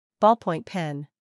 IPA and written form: ˌbɔːl.pɔɪnt ˈpen (Ballpoint pen)